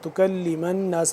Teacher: آگے تکلم الناس، میم نون زبر من، نون الف زبر نا، نون یہاں پہ مشدد ہے تو اس پہ ہم غنہ کریں گے